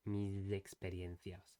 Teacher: So when he said mis, he pronounced the S as a sonorized S. So that what that means is he was vibrating the vocal cords at the same time, like a Z in English.